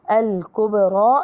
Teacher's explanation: الباء مقلقلة قلقلة صغرى لأنها في وسط الكلمة. الراء مفخمة لأنها مفتوحة.